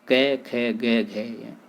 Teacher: ये सभी कंठ ध्वनियाँ हैं और इनका उच्चारण स्थान कंठ है, अतः ये एक स्थान पर संयोजित की गई हैं, इसलिए इनकी क्रमबद्धता एक जगह रखी गई है, अतः ये एक स्थान पर संयोजित की गई है।